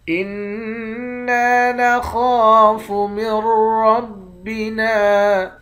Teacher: نون مشدد پر غنہ کریں گے، نون کے بعد الف ہے، ایک الف کی مقدار کھینچ کر پڑھتے ہیں۔ خا کو موٹا پڑھیں گے، ایک الف کی مقدار کھینچ کر بھی پڑھیں گے۔ میم کو را کے ساتھ ملا کر ادغام بلا غنہ کریں گے، یعنی میم کو تشدید والے حرف کے ساتھ ملا کر پڑھیں گے، جزم والے حرف کے ساتھ ملا کر نہیں پڑھیں گے۔